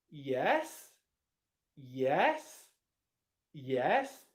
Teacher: If I used an upwards intonation pattern on that Yes. That would then mean I'm expecting you to then say something afterwards.